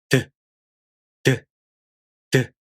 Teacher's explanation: So the tip of the tongue touches here. And stop means you first stop the airflow at the gum ridge, and then you make a sudden release of the air. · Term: voiced alveolar stop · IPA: [d]